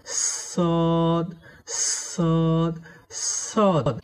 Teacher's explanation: জিহুবার আগা এবং সামনের নিচের দুই দাঁতের গোড়া একসঙ্গে লাগিয়ে শীষসহ মোটা করে পড়তে হয়